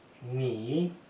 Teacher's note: Again, third tone, descending then rising.